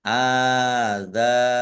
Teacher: alif fathah berdiri mat tabi'i, dal fathah alif juga mat tabi'i dibaca panjang 2 harokat.